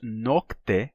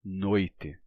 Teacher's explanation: o kt, esse encontro de consoantes, kt, teve o seu primeiro elemento vocalizado. Então, não mais nocte, e sim noite.